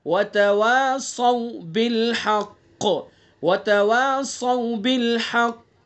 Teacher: قاف کے اندر قلقلہ بھی کریں گے اور پر بھی پڑھیں گے اس کو